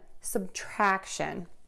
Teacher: we're going to have that schwa sound and that first syllable sub it's unstressed track shun subtraction next multiplication we have lots of schwas mul